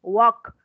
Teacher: La L es muda acá, no suena.